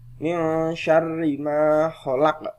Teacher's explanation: Di sini ada nun sukun bertemu dengan shin. Bacaannya adalah mendengung.